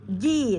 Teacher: pastikan tengah lidah dengan langit-langit. Ji, tidak ada desis, ya. Ji, 2 harokat juga, ada ya sukun, huruf sebelumnya berharokat kasroh pada ji, maka fi dan ji dibaca 2 harokat.